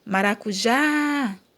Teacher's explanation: Maracujá, a sílaba tônica é o já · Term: oxítona